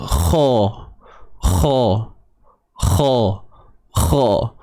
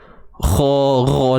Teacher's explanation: Pangkal lidah confirm naik lah sebab dia sifat tebal. Pangkal lidah. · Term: huruf kha